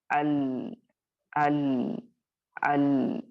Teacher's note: تو یہ جو لام ہوتا ہے جب اس پر ساکن آئے گی اور اس سے پہلے والے حرف پر زبر آئے گا تو الحمدللہ آپ اور میں کیا کریں گے، وہاں پہ لام کو اس کی آواز کو تھوڑا چلاتے ہوئے پڑھیں گے، کیونکہ وہ توسط یا البینہ کا لیٹر ہے۔ ہم اس کو جھٹ سے شدہ کی طرح سٹاپ بھی نہیں کریں گے، رخوا کی طرح بہت لمبا ال کر کے بھی نہیں کریں گے، بلکہ درمیانی آواز کو اختیار کریں گے